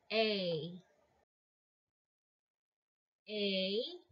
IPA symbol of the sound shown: ā